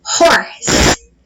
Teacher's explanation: O H aparece aqui na transcrição fonética. E o H aqui, ele tem som de R.